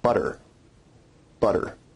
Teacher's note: a rapid flick of the tongue to some place of articulation in north american english we only really have one tap and that's at the alveolar ridge you can hear the tap sound in the word butter butter